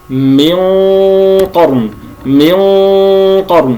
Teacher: نلاحظ هنا أننا فخمنا الغنة أيضا تهيئة للحرف المفخم الذي هو القاف